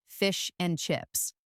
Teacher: The word and is very often shortened to just a softened sound. So fish and chips often becomes fish and chips.